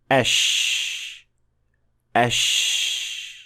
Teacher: With sheen, there is no connection or touching between the hard palate and the middle part of the tongue whatsoever. So, unlike jim, sheen is a fricative sound, which means that it is produced by the sound of air passing through the small space that is created. · sheen is a fricative sound, which means that it is produced by the sound of air passing through the small space that is created. That's why sheen is a continuous sound that will flow as long as you can push air out.